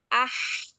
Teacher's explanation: Lalu ahsani taqawim. Alirkan H yang berada pada tengah tenggorokan